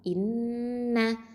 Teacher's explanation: இன்ன இந்த ஹம்சா அப்படிங்கிறது வந்து அகசல் ஹல்குலேருந்து வருது, கீழ்த்தொண்டை. நூன் அப்படிங்கிறது தரஃபுல் லிசான், நுனினாவை எழுத்து. இதில் ஷத்தா இருக்கிறதுனால அக்கமல் குன்னா கொடுக்கணும். · இதில் ஷத்தா இருக்கிறதுனால அக்கமல் குன்னா கொடுக்கணும். இன்ன அப்படின்னு சொல்லணும்.